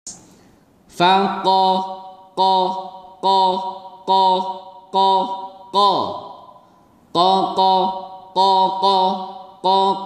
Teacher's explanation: Pangkal lidah bertemu dengan langit-langit yang belakang. Ujung atau pangkal lidah diangkat. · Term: Huruf Qa